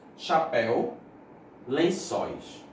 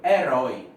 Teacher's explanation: Não, é oxítona. A última sílaba é acentuada. E nessa última sílaba aparece o ditongo.